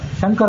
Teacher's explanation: ಶಂಕರ ಅನ್ನುವಲ್ಲಿ ತಾಲ ಶಕಾರವನ್ನು ಉಪಯೋಗ ಮಾಡ್ತೇವೆ